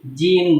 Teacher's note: Jadi menggunakan ujung lidah dengan gusi